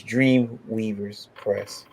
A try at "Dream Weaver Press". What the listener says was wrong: No S, just Weaver.